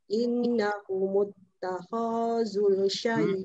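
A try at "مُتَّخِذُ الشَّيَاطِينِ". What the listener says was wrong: oh tak panjang ha khazush pendek je khaz ha ni pula dunia asalnya memang ada mat tapi tengok di depannya ada satu kan ha takhazush ha tarik sini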